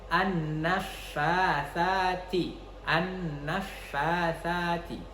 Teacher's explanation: nun itu memiliki makharijul huruf, yakni al-khayshum, yang mana dia harus masuk ke rongga hidung atau masuk ke hidung gitu ya